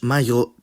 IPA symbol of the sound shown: ʝ